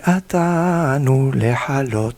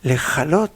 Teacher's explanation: Il faut faire attention de ne pas transformer le het en chaf. Le het est plus au fond de la gorge, le chaf, c'est pas évident.